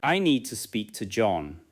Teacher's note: Tap on need, speak, and John.